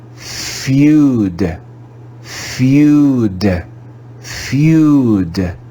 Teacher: this is another irregular word and we read it with the diphthong sound you you as in music